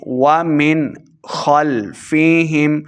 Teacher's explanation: ومن خلفہم بغیر غنہ کے پڑھنا ہے یعنی اظہار کا قاعدہ ہے